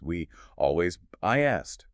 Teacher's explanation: >> the first word ends in a high front vowel like we or I, your mouth is stretched wide in a smile. So, as it relaxes, a Y sound sneaks in.